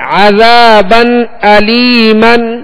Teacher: عذابا علیما، با پر 2 زبر ہے، 2 زبر کی تنوین ہے. تنوین کے بعد حمزہ حروف حلقی میں سے آ رہا ہے، لہذا یہاں پر اظہار کریں گے. عذابا علیما، عذا زال کے آگے الف ہے، الف مدہ ہے، 1 الف کی مقدار کھینچ کر ادا کریں گے.